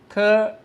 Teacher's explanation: The initial t is like the English t in tap, but released with more force and the tongue touching the upper teeth